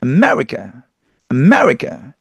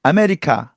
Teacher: 매 한 번 강세 들어가죠. 근데 우리는 아메리카 네 번 강세를 준다는 거죠.